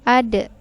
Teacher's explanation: huruf Dal yang dia sukun hukumnya disini adalah Qalqalah maka dia dipantulkan